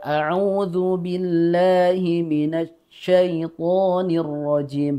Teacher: belum terpenuhi sifat tafasyinya sehingga makanya tadi tidak terdengar seperti ada suara desisan